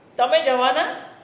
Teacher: તમે જવાના, તમે જ્યારે એવું કહો છો ત્યારે તમે પૂછી રહ્યા છો, કારણ કે તમારો ભાર જવાના પર છે. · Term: બલાઘાત